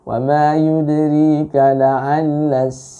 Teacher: la'alla itu Anda kepanjangan membacanya ya, lebih daripada dua ketuk, lebih daripada 2 harokat ya